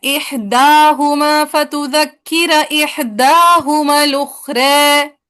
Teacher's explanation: احداہما پہ دونوں جگہوں پہ فتحہ ہوگی اور اخرى پہ جسٹ تقلیل